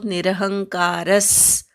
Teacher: निरहंकारस विसर्गाचा स असा उच्चार करायचा, अर्धा स उच्चार होतो